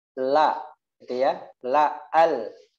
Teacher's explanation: Kemudian yang la, makhrajnya yaitu ujung tepi ujung lidah ke gigi atas. Gigi atas tuh ya dari gigi seri sampai gigi taring. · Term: makhraj lam